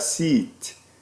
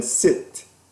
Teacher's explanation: the e is tense